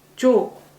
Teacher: Normally in a speaking form, you're not going to say 줘 like this. Even though the vowel is 워 vowel, casually we're gonna say 줘. It's almost like 요 vowel.